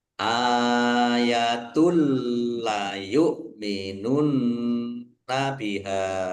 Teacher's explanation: Domah tanwin bertemu dengan huruf lam bacaan idgham di laguna masuk dengan tidak mendengung, yaitu domah tanwinnya tidak dibaca langsung masuk ke huruf lam